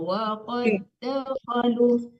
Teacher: Pindah, waqad dakhalu itu nggak boleh dipantulkan dalnya karena di depannya juga dal ya. Waqad dakhalu ditahan diteruskan ke dal, jangan dipantulkan dalnya.